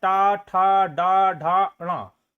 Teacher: टा ठ ड ढ ण यह मूर्धा के अंतर्गत आता है या मूर्धा से बोला जाता है